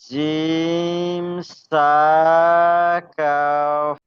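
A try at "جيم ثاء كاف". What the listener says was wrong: কাফতে আরো টান দেন। কা বলে ছেড়ে দিলে হবে না, কাফ লাস্টে ফা উচ্চারণ হবে, কাফ বলেন।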